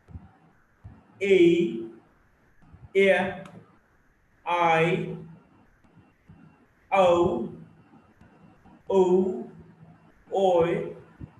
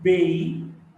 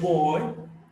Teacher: These are all closing diphthongs. The lips are closing towards the end.